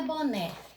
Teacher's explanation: tônica no né porque ela tá acentuada tá fácil né então ela é oxítona porque ela está na última sílaba